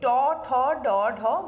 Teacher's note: জিউহার অগ্রভাগ এগিয়ে এসে উল্টিয়ে মূর্ধাকে স্পর্শ করছে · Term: মূর্ধন্য